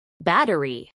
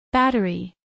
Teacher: a pronunciar en inglés por hablantes nativos battery tres sílabas battery acentuación en la primera sílaba